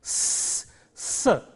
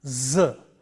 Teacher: The next pair is, this is S and Z. The first one is a voiceless sound, S, S, and the second one is a voiced sound, Z